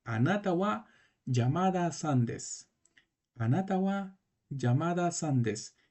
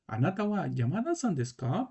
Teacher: la partícula K que es de pregunta va a alzarse la voz acá se alza un poquito la voz arriba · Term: entonación de pregunta